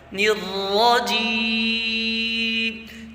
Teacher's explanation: جیم میں آواز باریک رہے اور خیال رہے ناک میں آواز نہ جائے اور وقف پورا رہے۔